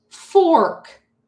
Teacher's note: The first sound is f. That's a continuous sound.